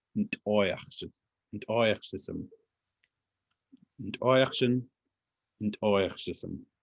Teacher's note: you should see that T apostrophe, that's like a popped T.